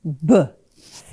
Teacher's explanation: If you say B, and I'm going to put my finger on my voice box right here, B, and B is a plosive. It's called a bilabial plosive, and it's voiced right down here in my throat.